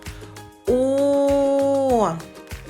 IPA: о